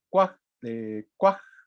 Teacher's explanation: Bueno, en este justamente lo que hace es agregar nada más el saltillo, se comporta exactamente igual. Y entonces el pasado de qua será cuaj, cuaj con la glotal